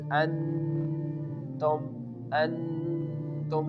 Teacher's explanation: the hamza is making a connection with the noon and the sound is going into your nose. So we can pronounce it like an.